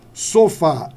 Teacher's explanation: sofá é a última que é acentuada